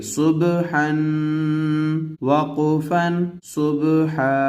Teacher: با حروف قلقلہ میں سے ہے تو اس کو تھوڑا سا ہلا کر پڑھیں گے